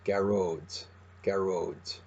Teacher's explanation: you're hearing the released D at the end because we're using our dialect, where the slender D is a released D · The O fada here evens out the stress.